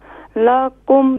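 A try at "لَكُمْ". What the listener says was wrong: لاکم نہیں لکم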